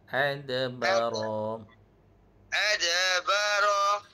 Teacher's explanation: Ra pendek satu harakat saja.